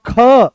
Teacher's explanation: जैसे ही ख बोलते हो तो पूरे कमर तक इसकी दम निकलता है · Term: महाप्राण